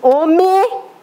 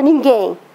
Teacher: o M, no final da frase, olha que interessante, depois de um E, ele vem para I